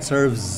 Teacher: Serve ada es-nya itu dibaca z, serves.